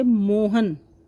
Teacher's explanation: पूर्वक उसको दर्शाया जाता है तो उसको बलाघात बोलते हैं जैसे मोहन हन है वह जल्दी बोला जा रहा है लेकिन मो के ऊपर जोर पड़ रहा है